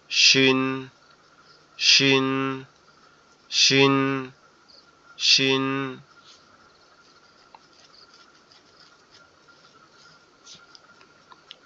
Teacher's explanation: এরপরের যে অক্ষরটা সেটা হচ্ছে শিন, শিন অক্ষরটা আবার আমাদের দুই দাঁতের পাটি একসাথে শক্ত করতে হবে এবং উপরে তালুর সঙ্গে লাগবে, লেগে উচ্চারিত হবে শিন, শিন, শিন, শিন।